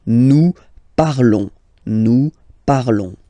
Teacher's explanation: Remember, final s is not pronounced